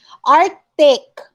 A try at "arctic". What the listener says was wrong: there's a c in here so you have to pronounce it